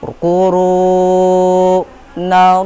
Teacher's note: Kuru nallah masuk ke dalam hukum tafkim, yaitu lafaz Allah berada setelah huruf hijaiyah yang berharokat fathah. Jadi cara bacanya tebal.